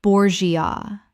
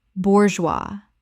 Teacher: 2 syllables. The G makes a Z sound and the S is completely silent.